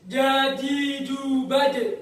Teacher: Jahrun itu ya tadi cara pengucapannya. Jadi ketika keluar suara hurufnya jangan disertai dengan keluarnya nafas. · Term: sifat jahar